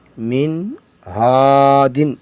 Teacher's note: نون ساکن کے بعد حروف حلقی میں سے ہا آیا ہے تو یہاں پہ بھی اظہار ہوگا